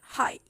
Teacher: The last fricative is the H and high, and this is a glottal fricative. So the glottal stop in o, and the glottal fricative is in high.